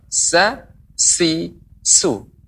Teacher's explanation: Huruf sa, tipis. Lidah kita datar.